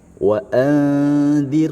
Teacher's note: rnya dibaca tarqik tipis karena dia didahului dengan e kasrah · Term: tarqiq tipis